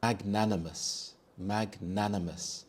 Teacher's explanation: The stress is on the second syllable nan